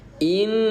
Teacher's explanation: bacaan gunnah yang dibaca tahan 2 ketukan